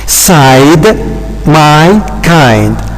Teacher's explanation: In fact, in a diphthong, we have got what we call a gliding movement from the position of the first vowel to the position of another vowel